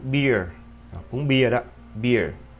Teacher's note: đọc là ear, nó kết hợp y và chữ ơ lại với nhau